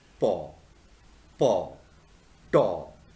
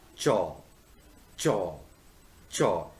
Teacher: in case of paw, taw, you release the air, but in case of chaw and jaw, you have to release the air facing a kind of obstacle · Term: affricates